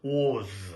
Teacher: You can see the O sound is jaw wide open and tongue back. W, O, Z. Was. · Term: strong form